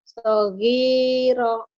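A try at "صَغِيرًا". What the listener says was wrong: Panjang atuh.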